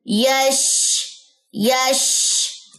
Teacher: शीन के अंदर आवाज फैलती है उसमें फैलाव है आवाज का मुंतशिर होना जो है इसमें पाया जाता है